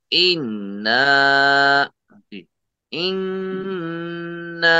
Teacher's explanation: انا میں جو ہے گنہ ہے، ناک سے آواز نکالی جائے گی، نون کی آواز ناک سے نکالی جائے گی گنہ کے ساتھ اور ڈبل حرکت کے ساتھ